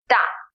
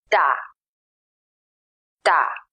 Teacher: to sound it out try to say a t sound without puffing air out